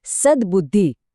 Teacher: સતનો જે કઠોર ત અવાજ છે એ જ્યારે બુદ્ધિના નરમ બ અવાજને મળ્યો ત્યારે એ પોતે પણ નરમ બનીને દ થઈ ગયો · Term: વ્યંજન સંધિ